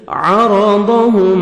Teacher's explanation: را کو موٹا کر کے پڑھیں گے، ضاد کو موٹا کر کے پڑھیں گے، میم ساکن کا اظہار ہے، جلدی پڑھیں گے.